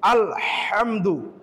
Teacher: হাটাকে কন্ঠনালী চাপ দিয়ে আমাকে উচ্চারণ করতে হবে